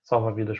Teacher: Salva-vidas, por exemplo, é uma palavra paroxítona. Por quê? Porque eu falo vi, é mais forte.